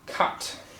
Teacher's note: you've got this really hard C and then you have this plosive T